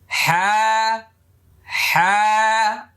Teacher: 2 নম্বর মাখরাজ, মানে কণ্ঠনালী হলক, গলার মাঝখানে, গলার মধ্যখান, হ্যাঁ। ওকে, হ্যাঁ হ্যাঁ, অনেকটা চাপাচাপি করার দরকার নেই, হ্যাঁ হ্যাঁ এরকম যেন না হয়, একদম ইজি ভাবে।